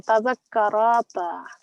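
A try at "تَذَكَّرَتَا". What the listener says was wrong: Tadakkarata. No, don't stretch the raw. Don't stretch the raw.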